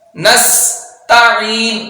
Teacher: اب نس سین میں سیٹی پیدا کریں گے ، نستعین، تا کو باریک پڑھیں گے، عین کی آواز نکالیں